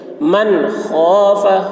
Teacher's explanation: من میں اظہار، ان کو ظاہر کر کے بلا غنہ کے جلد پڑھیں گے. من خاف، خا کی آواز موٹی ہوگی، خاف.